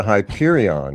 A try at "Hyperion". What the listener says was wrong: You are. You're adding a little flair to it. You're adding a little flair to the end.